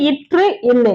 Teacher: மேல்வாயின் நாக்கின் நுனி மிகவும் பொருந்துவதால் பிறக்கின்றது